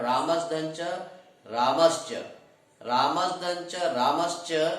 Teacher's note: यहाँ पर जो है ना दंत सकार के स्थान पर तालव्य सकार हो जाता है या हो गया है।